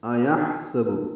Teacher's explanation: أَيَحْسَبُ حمزہ کو واضح کر کے ادا کریں گے. ہا ساکن ہے، اس پہ ہمس ہوگا یعنی سانس جاری رہے گی، وسط حلق سے ادا ہوگا. سین با کو جلدی پڑھیں گے.